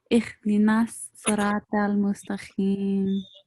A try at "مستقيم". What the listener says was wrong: It's so this letter Q, we need to pronounce it as Q, not as KH, right? So mustaqim, mustaqim.